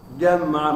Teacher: jimnya adalah jahar, ya, tidak dibaca hamas, tidak boleh ke udara. Jam'a bukan jam'a, ya.